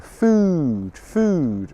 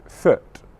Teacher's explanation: my lips open slightly more for the short sound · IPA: /ʊ/